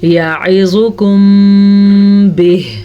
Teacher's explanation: ہم دونوں ہونٹوں کو بند کر کے غنہ کی کنڈیشن پیدا کریں گے، اسی کو کہتے ہیں اخفاء شفوی